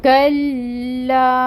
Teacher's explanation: تو اس فتحہ کی حرکت کو 1 کاؤنٹ ادا کریں گے، اور اس لام کے ساتھ اس کاف کو ٹائٹلی جوائن کریں گے، کیونکہ لام کے اوپر آپ کو تشدید نظر آ رہی ہے۔ تشدید کا مطلب ہے ٹائم ٹیکنگ کریں گے۔